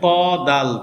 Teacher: জিহ্বার আগা সামনের উপরের দুই দাঁতের গোড়ার সঙ্গে লাগে